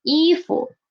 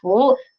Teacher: For this character, when it is used alone, it is a second tone, 服, close. But when it is inside 衣 服, this word, it is a neutral tone, and it means close.